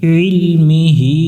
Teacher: গলা চেপে আইন অক্ষরটা উচ্চারণ করব মি হি এখানে হা অক্ষরের নিচে খারা জের আছে এক আলিফ